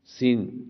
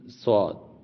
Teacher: تو سین باریک، صاد موٹا، دیکھیں صاد موٹا، دیکھ لیا نا آپ نے، صاد موٹے حروف میں ہے، سین، صاد، ثا بالکل آپ نے نارمل پڑھنا ہے، کوئی موٹا نہیں، سیٹی کی آواز نہیں، سین اور صاد میں سیٹی کی آواز دونوں میں ہے لیکن صاد موٹا ہے، سین باریک ہے